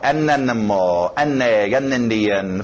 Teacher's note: Para poder fluir melhor, colocar um Nzinho nesse A. E ele fica N.